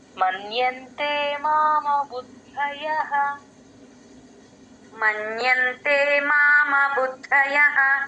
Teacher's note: బు కి దా ని జాయిన్ చేయాలి ద కింద డ వత్తు మహాప్రాణం రెండు ఉన్నాయి గమనించండి